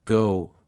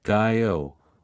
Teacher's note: in Australian English, the word go might sound like guy-o, reflecting a wider range of diphthong movement